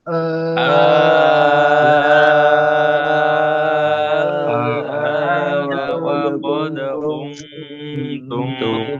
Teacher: Benar-benar datar ya nadanya.